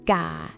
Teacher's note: It is mid-class consonant plus long vowel plus my ek, so the tone is low.